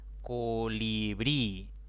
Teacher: es una palabra de tres sílabas la mayor intensidad cae en la última sílaba como termina en vocal debo a tildar debo ponerle una tilde